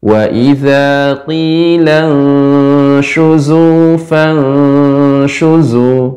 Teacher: Shin sifatnya menyebar. Shu, tidak su